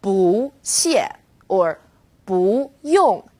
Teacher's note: when bull is used before another fourth tone it becomes second tone bull or boo yo can you hear how it changed now